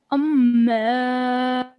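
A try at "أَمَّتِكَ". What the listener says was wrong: Okay, so we will have to work on that, okay? Just remember that when it's a mim mushaddad, there has to be a 2-second nasal sound.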